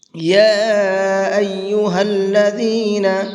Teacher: یہاں یا کے اوپر یہ چھوٹا مد ہے، اس کو 1 سے 3 الف کے برابر کھینچ کر کے پڑھیں گے